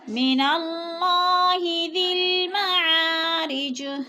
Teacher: اللہ سے پہلے لفظ نون کے اوپر زبر ہے تو اللہ کو پر کر کے پڑھیں گے، اور کھڑی زبر ہے تھوڑا سا کھینچ کر پڑھیں گے۔ · یا کو نہیں پڑھیں گے، ذال کو لام کے ساتھ ملا کر پڑھیں گے، اور معا جو ہے ادھر الف مدہ ہے، الف کو بھی کھینچ کر پڑھنا ہے۔